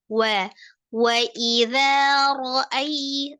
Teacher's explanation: Tidak sempurna mengucapkan huruf waw tanpa memajukan kedua bibir ya, sesuai makhrajnya. Khusus untuk huruf waw fathah tetap dimajukan bibirnya.